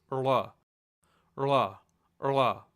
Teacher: The sound is produced by taking your tongue and just kind of giving a weak flap. It's kind of like curling your tongue backwards and just trying to say an L sound, but it's going to kind of flap out very quickly. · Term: retroflex letter rla